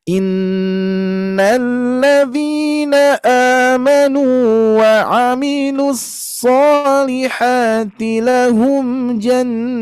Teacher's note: Di sini mad ari disukun kita panjangkan sebanyak 4 harokat saja